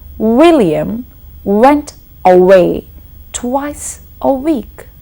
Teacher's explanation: I was rounding my lips and bringing them forward every time I had to pronounce w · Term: W sound